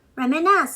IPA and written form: ˌremɪˈnɪs (reminisce)